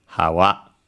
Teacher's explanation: So the first one is low and then second one is high.